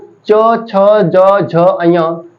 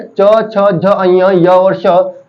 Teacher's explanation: जिन व्यंजनों के उच्चारण में हमारे तालु का सबसे आगे वाला भाग मदद करता है, उन्हें हम बोलते तालव्य व्यंजन